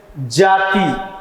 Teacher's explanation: किसी अक्षर अथवा शब्द विशेष पर अधिक बल देना, न कोई बात बोल रहे हैं हम और बोलने में किसी ऐसे अक्षर पर अधिक बल दिए, जैसे जाति, तो जा पर अधिक बल दे रहे हैं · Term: बलाघात